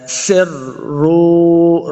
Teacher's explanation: وَأَسِرُّوا، سین پہ سیٹی کی آواز آئے گی، سین کو را کے ساتھ ملائیں گے، را مشدد ہے